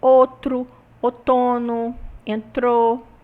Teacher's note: Nós também temos o ditongo ou passando a o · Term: redução do ditongo ou